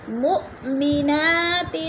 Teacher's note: مو پہ حمزہ ساکنہ ہے، جھٹکا دے کر پڑھیں گے